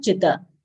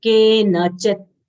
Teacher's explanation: Chi short sound, ta is half.